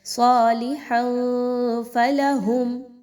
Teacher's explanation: تنوین کے بعد فا کا حرف آ رہا ہے، یہاں پر اخفا کیجئے، تنوین کی آواز کو ناک میں چھپائیے، کلیئر نہیں پڑھنا۔